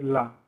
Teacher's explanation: जब आप ला बोलते हो तो जीभ आपकी खड़ी हो जाती है, जो मुख से बाहर जो वायु निकलती है उसको रोकती है